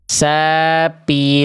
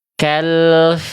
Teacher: kenapa huruf fa seringkali mampet nafasnya berubah jadi huruf P